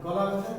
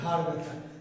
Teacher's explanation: ক আর গ বলতে গেলে অনায়াসে তার বলা যায় অল্প পরিশ্রমে, আর খ এবং ঘ বলতে গেলে যেন একটু বাড়তি প্রেশার সৃষ্টি করতে হয়, কারণ একটু বেশি বাতাস বের করতে চাই আমি, ফলে একটু বাড়তি চাপটা বেশি দিতে হয়।